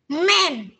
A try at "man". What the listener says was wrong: Yeah, man. Ê, ê, man. Man. Không cần cong lưỡi ha. Cái từ này thì mình đọc không cần cong lưỡi, mình đọc nhẹ nhàng thôi. Man. Yeah, man. Thì cái này không phải là âm an ha, man không phải mang, không phải men mà là men. Đúng rồi, nhớ nha, không phải mang nha.